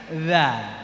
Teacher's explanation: tiga huruf contohnya ketika makhraj ujung lidah Coba lihat lidah masing-masing ujung lidah dengan ujung gigi seri atas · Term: huruf dza